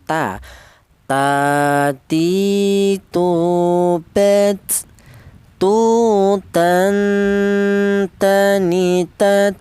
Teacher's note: Huruf ta ini keluarnya huruf berasal dari ujung lidah menyentuh pangkal gigi seri atas